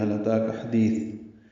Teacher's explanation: ہا کو لام سے ملائیں گے، ہا اقصی حلق سے ادا کریں گے، لام ساکن پہ اظہار ہے۔ اتا کا حمزہ بالجہر ادا ہوگا، تا کو 2 حرکات لمبا کرنا ہے، اس کے بعد ایک یا کا نشان بنا ہوا ہے وہ نہیں پڑھنا، تا پر کھڑا زبر ہے تو وہ یا کا نشان نظر آ رہا ہے۔